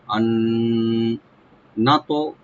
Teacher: এখানে নুন সাকিনের পরে যেহেতু নুন আসছে, এখানে আমরা ইদগাম উইথ গুন্না করবো। আন না তো, নুনটাকে ওপেন করে তাতে একটু হালকা আমরা কলকলা করব, ইয়ানি ইকু করে পড়বো।